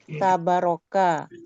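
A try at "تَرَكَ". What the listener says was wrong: Apa itu bukan berkah, tinggal taroka. Bukan barokah.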